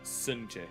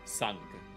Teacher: there was palatalization that occurred in Romanian, but in Portuguese it was preserved.